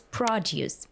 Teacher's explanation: So we have the stress in the second syllable to produce, and produce is noun. So the stress falls on the first syllable.